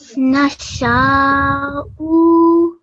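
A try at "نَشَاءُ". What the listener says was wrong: So make this a little shorter. Remember, just Dhamma is going to be considered here. So just 1 second on the Hamza, okay?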